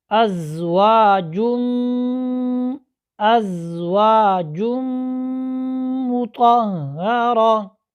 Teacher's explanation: یہاں پر میم آ رہا ہے تو یہاں پر ادغام بالغنہ ہوگا